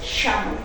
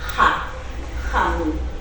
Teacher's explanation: Ellos utilizan sha. Y luego nosotros, el Cusco Collao utiliza ja, jamu.